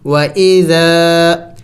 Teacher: آگے ذال نرم حروف میں سے ہے، نرم حروف 3 ہے، ذال ثا ظا، اس کو نرم پڑھیں گے۔ و اذا، الف مدہ ہے، ذال کو لمبا کریں گے، کھینچیں گے